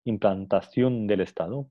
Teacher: tenemos un caso de asimilación regresiva, ¿no? Porque D ha afectado un sonido que viene antes, ¿no? La N pasa a ser dental